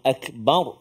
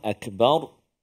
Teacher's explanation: huruf ra yang kita matikan dia Jadi dia bunyi tebal Akbar yang tebalnya ro bukan ba